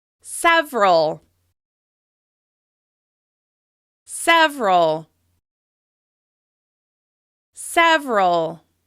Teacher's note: Notice how you're stressing that first syllable and relaxing on the second. It should feel like less work on the second syllable.